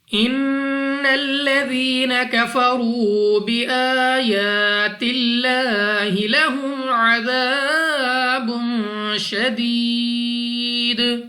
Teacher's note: नून मुशद्दद गुन्ना करके पढ़ना है।